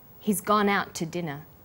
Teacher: in out is held slightly longer he's gone out to dinner the TT sound is pronounced only once · When we link out, which is stressed, and to, which is unstressed, the final t sound in out is held slightly longer.